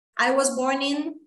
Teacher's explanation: eu posso inclusive juntar o N com o I aqui, consoante vogal, ó. I was born in, ó.